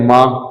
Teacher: इसमें नाक से भी वायु निकल रही है और आपके देखिए माँ, है ना, मुंह से भी निकल रही